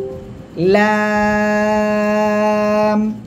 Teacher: জিহ্বার আগার কিনারা, উপরে মাড়ির দাঁত, এই যে, ঠিক আছে, 2 পাশের যে কোনো পাশে লাগালে হবে। জিহ্বার আগার কিনারা, উপরে মাড়ির দাঁতের গোড়ার সঙ্গে লাগিয়ে আপনি উচ্চারণ করবেন, 4 আলিফ টান হবে।